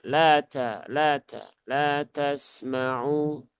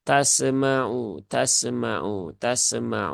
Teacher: Sin sukun dia ada sifat rakhaah